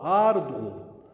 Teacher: Aqui eu tenho semivogal e vogal. Então eu tenho um ditongo, né, crescente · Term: ditongo crescente